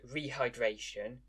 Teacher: the English word rehydration carries stress on the third syllable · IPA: /rihaɪˈdreɪʃən/